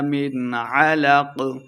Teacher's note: اظہار کا قاعدہ ہے، غنہ نہیں کریں گے